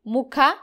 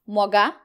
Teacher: ಮಹಾಪ್ರಾಣ ಅಕ್ಷರ ಬಂದಾಗ ಅದು ಅಲ್ಪಪ್ರಾಣ ಅಕ್ಷರ ಆಗುತ್ತೆ ಮುಖ ಅಂದಾಗ ಮೊಗ ಗ ಆಗುತ್ತೆ ನೋಡಿ ಖ ಮಹಾಪ್ರಾಣ ಗ ಅಲ್ಪಪ್ರಾಣ ಆಗುತ್ತೆ